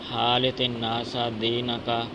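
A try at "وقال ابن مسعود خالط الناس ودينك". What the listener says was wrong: وقال ابن مسعود خالط الناس پہلے آپ نے واو چھوڑی ہے یار خالط الناس لوگوں کے ساتھ ہاں جی لوگوں کے ساتھ مل جل رکھا کرو یعنی لوگوں کو ملتے رہا کرو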